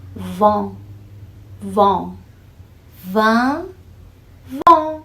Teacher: você faz o an do vão, aí fecha a boca, coloca assim os seus lábios para frente e fica vão, vão. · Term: vogal nasal